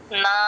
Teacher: నా అన్నలో నా ఎక్కడ పెడుతున్నామో టంగ్ ఒకసారి చూసుకోండి వెనకాల పళ్ళకి తగులుతుంది నా అన్నప్పుడు టంగ్ సేమ్ అదే ప్లేస్ లో నెక్స్ట్ నా కూడా తీసుకురావాలి